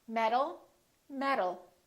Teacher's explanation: These two sounds sound exactly the same because the T changes into a D when it's between two vowels.